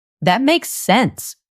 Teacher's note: The stress is on sense.